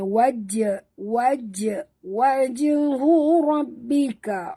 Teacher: jim juga adalah qalqalah. Jadi kita kena lantunkan sebutannya.